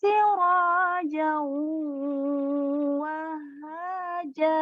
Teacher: kalau ini tanwin bertemu waw bertasydid. Ini hukumnya idgham bi gunnah.